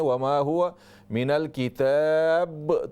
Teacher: होंठों को सख्त न करें। अगर सख्त करेंगे तो वो शद बन जाएगा, यहाँ तशदीद नहीं है।